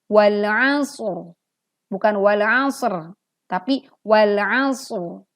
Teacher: Nah, didahului huruf mati lalu kemudian juga didahului huruf berharokat fathah. Maka ro di sini jika dimatikan atau diwakafkan maka tebal. Kecuali kita membacanya wasol, artinya ro-nya tetap hidup, maka ro ini akan kembali tipis karena berharokat kasroh.